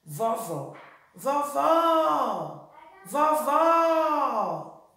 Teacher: a sílaba mais forte da palavra vovó é o segundo vó